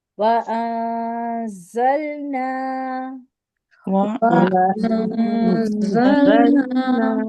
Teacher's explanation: وَأَنزَلْنَا میں سیٹی کی آواز ہے